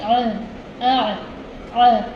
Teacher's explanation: عین ہا یہ حلق کے درمیانی حصے سے ادا ہوتا ہے · اندر آواز آپ کی حلق کے درمیانی حصے سے ادا ہوگی. تھوڑا مشکل مخرج ہے، پریکٹس کرو گے تو آ جائے گا.